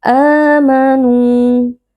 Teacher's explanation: ada mad badal karena terdapat hamzah yang bertemu dengan alif, dibaca panjang 2 harokat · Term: mad tabi'i